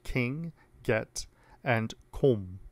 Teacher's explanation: Velar sounds are made with the body of the tongue approaching or coming into contact with the velum, the soft palate. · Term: velar stops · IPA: [kɪŋ] [ɡɛt] [kom]